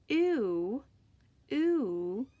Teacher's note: So if you say this with me, ooh, ooh, you notice that your mouth starts off with your lips round, and then it relaxes into a W, ooh. And the same when you say this ooh. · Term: diphthong, sliding sound